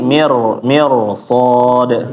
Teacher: Jadi membacanya ditebal ditebalkan ya ditafkhim. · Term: tafhim